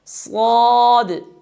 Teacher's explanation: استعلاء کی وجہ سے ہم اس حرف کو موٹا ادا کریں گے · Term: صفت استعلاء